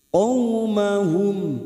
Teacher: huruf qaf ini huruf isti'la, huruf tebal. Maka jangan samakan dengan huruf kaf.